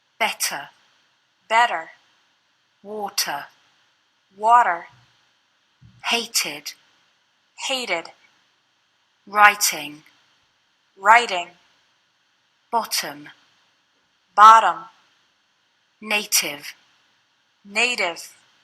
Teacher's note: Americans often pronounce the letter T like a quick D sound.